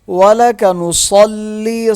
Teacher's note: صاد موٹا ہوگا اور لام کے ساتھ سختی کے ساتھ مل جائے گا، لام کو ایک الف کے برابر کھینچ کے پڑھیں گے کیونکہ اس کے ساتھ یا ساکن ہے۔